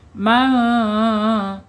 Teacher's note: Sukun menghadapi huruf kaf ini namanya ikhfa hakiki ya. Man bacanya disamarkan. Disamarkan kemudian ditahan dua harakat